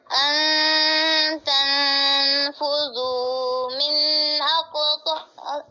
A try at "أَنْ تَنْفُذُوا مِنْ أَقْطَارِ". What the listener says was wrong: मिन पे आपने गुन्ना कर दिया है जी